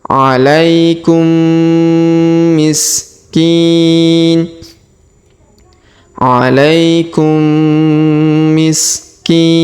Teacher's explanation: mim bertemu mim, apalagi mimnya ini bertasdid ya, maka kita tahan dan tekan, kita dengungkan 2-3 harokat.